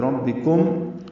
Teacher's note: کم میں میم ساکن پہ اظہار شفوی ہے، کنوا نہیں پڑھنا، بربکم یہ غلط ہے، بربکم.